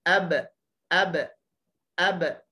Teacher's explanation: Bunyi ba kat belakang tu adalah qalqalah, lantunan.